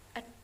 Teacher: bunyi konsonan rapat lepas tiba-tiba hambat letup bersuara apiko palatal